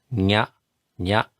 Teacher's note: The N with the tilde on it is what I like to think, similar to Spanish ña. So that's very close to a Y, but it's nasalized.